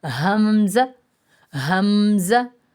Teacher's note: اقصی حلق سے جو سینے کی طرف ہے